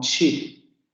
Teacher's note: Como las dos son sordas, sabemos que es una consonante sorda, y además es una postalveolar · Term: africada postalveolar sorda